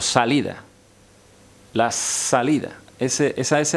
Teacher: apoyando la lengua en los dientes es una ese que se llama pedorsal una s dental esa ese es un